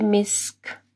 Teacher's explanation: پھر کاف کے اوپر جو ہے دیکھیں جیم ہے، وقف کریں گے تو کاف جو ہے ساکن ہوگی تو ہمس کی آواز بھی آئے گی